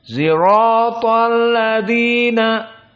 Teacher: sebagian Arab meskipun dipaksa tidak akan bisa membaca shad, sirata. Maka akan dibaca dengan zirata.